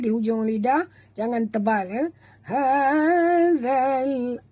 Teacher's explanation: Jaga makhraj zal di hujung lidah. Jangan tebal ya.